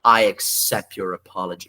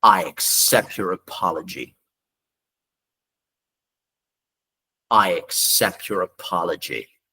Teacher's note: Você viu que eu nem falei o t